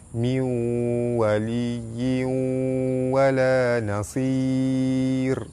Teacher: Nun mati bertemu waw, hukum dia idgham ma'al gunnah, cara baca dia masuk dengan dengung 2 harakat.